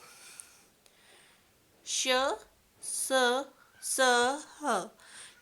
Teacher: ऊष्म व्यंजन, ऊष्म यानी कि गर्म। इन व्यंजनों के उच्चारण के समय वायु मुख से रगड़ खाकर ऊष्मा पैदा करती है, यानी उच्चारण के समय मुंह से गर्म हवा निकलती है।